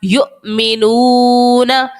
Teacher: یہاں پر اس لائن کے اندر آپ دیکھ رہے ہوں گے کہ حمزہ جو ہے وہ ساکن ہے، حمزہ کے اوپر علامت جزم ہے، حمزہ ساکن ہے. اور جب بھی حمزہ ساکنہ ہو تو وہاں پر ہم جھٹکا دے کر ادا کرتے ہیں، جھٹکے کے ساتھ جو ہے اس کو پڑھتے ہیں، اسی لیے اس پوری لائن کے اندر ہم نے جھٹکے کے ساتھ حمزہ کو پڑھا ہے.